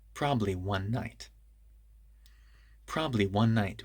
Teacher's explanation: one ends with n and night begins with n so they connect together